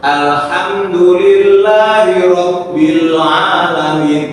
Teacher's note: lam itu memiliki sifat tawas atau bainiah yang dialirkan mengalir tetapi hanya setengah harakat